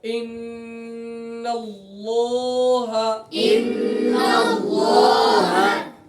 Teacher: نون مشدد میں ایک الف کے برابر غنہ ہوگا